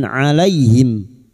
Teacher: Fathah bertemu ya sukun. Kita lunakan huruf lin